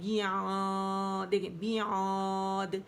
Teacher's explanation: منہ بند کیا اور میری آواز جو ہے وہ ناک میں چلی گئی، مد میں غنہ آ گیا، وہ ہم نے نہیں کرنا.